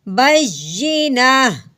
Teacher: تو، آگے وقف، بینہ، ہاں جی یہاں پہ گول تا ہے، وقف صورت میں تا کو ہٹا دیں گے، صرف ہا کی آواز نکالیں گے